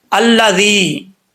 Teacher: या साकिन से पहले ज़ेर है, तो एक अलिफ की मिकदार इसको लंबा करेंगे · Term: या मद्दा